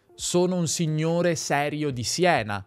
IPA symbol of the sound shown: s